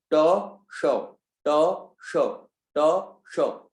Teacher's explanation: मूर्धन्य होता है शौ, इसमें जीभ मुड़ेगी आपकी